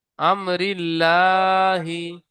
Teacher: আল্লাহর শব্দকে জের এসেছে। তাই আল্লাহর নামকে বারিক করে পড়তে হয়।